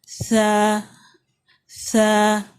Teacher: موٹی سیٹی ہے، اس میں بہت نرمی سے ادا کرتے ہیں. سیٹی کی آواز اس میں بالکل اتنی کلیئر بالکل بھی نہیں آئے گی.